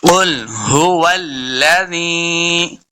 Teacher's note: قاف کو موٹا پڑھیں گے، لام ساکن ہے، بات کا خیال رکھنا ہے کہ لام کو جنبش نہیں دینی